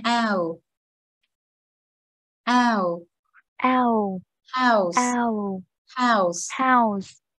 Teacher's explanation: Khi âm này nó là âm ao, nó gần giống âm ao tiếng Việt nhưng mọi người hay tưởng là âm ao nó gần giống thôi. Thực ra nó là ao, ù nhẹ phía sau cho cô nha.